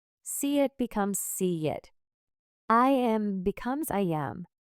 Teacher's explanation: When one word ends with a vowel sound and the next word starts with a vowel sound, we add a small linking sound to connect them smoothly. If the first word ends with an E sound, we add a small Y sound. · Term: linking vowel to vowel